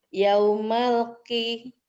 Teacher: lamnya bukan huruf qalqalah, maka tidak boleh dipantulkan.